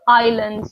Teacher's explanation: notice that I don't pronounce the S so Island the S is silent